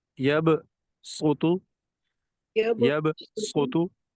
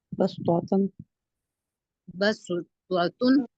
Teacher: صاد کو سین کی طرح سین بنا کر پڑھیں گے، اور بعد میں کلکلہ کریں گے